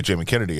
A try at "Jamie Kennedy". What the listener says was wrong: Sounded like you said Jimmy.